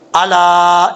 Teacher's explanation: مد منفصل کی تعریف ہے، حرف مد کے بعد حمزہ دوسرے کلمہ میں ہو تو مد منفصل ہوتی ہے، اور یہاں پہ 2.5 الف کے برابر اس کو لمبا کر کے پڑھا جائے گا